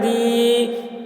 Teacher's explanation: بللہ، بللہ دین اللہ، دال یا زیر دی، یا ساکن سے پہلے زیر ہے، یا مدہ ہوا، اس لیے یا مدہ کو ایک الف کے برابر کھینچ کر پڑھیں گے